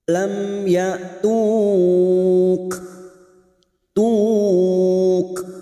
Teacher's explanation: Mat arid li sukun bertemunya mat dengan huruf hidup yang dibaca waqaf 4 harokat kita panjangkan. Dan ujungnya terdapat huruf kaf yang memiliki sifat hamas dan syiddah